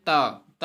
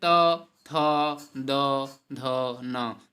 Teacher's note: दंत के अंतर्गत हम दंत मतलब जो दांत से बोले जाएं उन्हें हम दंत कहते हैं। जैसे ता, ता अगर आप बोलेंगे तो दांत को स्पर्श करते हुए जीभ चलती है